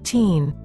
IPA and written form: tiːn (Teen)